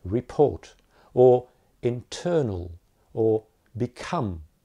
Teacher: the per only comes at the beginning of the second syllable but that happens to be a stressed syllable also so very strong aspiration